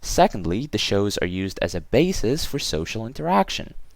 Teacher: right just before the joining words in this case it's or my voice goes a little bit higher and starts coming down after or towards the end of the sentence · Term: intonation pattern